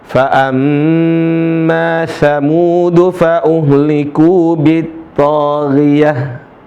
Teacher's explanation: Tempat keluarnya ditenggorokan. Gha. tenggorokan tengah, sama seperti huruf kha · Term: huruf gha